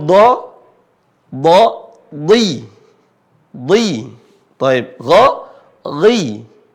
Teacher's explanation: kalau dia berharakat kasrah dia mirip seperti I disertai dengan bunyi tebal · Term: I yang tebal